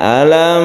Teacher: cara membacanya izhar yaitu jelas dan tidak berdengung alam langsung ya tidak boleh dipanjangkan alam tidak boleh ini langsung saja karena izhar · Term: izhar syafawi